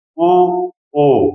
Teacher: जो हमारे ओठ होंगे वो क्या होंगे एकदम वृत्त के आकार के होंगे ये गोलाकार हो जाते हैं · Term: वृत्त मुखी